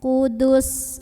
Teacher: jadi dalnya ini pendek enggak ada pemanjang setelahnya